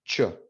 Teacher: starts as an oclusiva and ends as a fricative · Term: africada